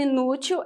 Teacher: porque a tonicidade e o acento recai na penúltima sílaba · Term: paroxítona